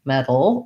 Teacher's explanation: it's basically between a t and a d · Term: flap